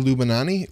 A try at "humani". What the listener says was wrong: Humani. No, I think that's an H. Humani.